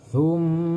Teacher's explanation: Mim bertasdid ini disebut gunnah. Cara membacanya yaitu harus dengan cara dengung.